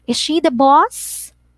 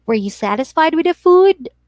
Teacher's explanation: or yes or no so usually when you ask this question the tone of your voice actually rises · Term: intonation goes up